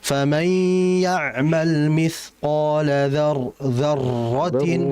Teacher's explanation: Wa akhfi takriran idza tushaddadu. Hati-hati dia membaca ra yang bertasydid. Jangan terlalu banyak getaran.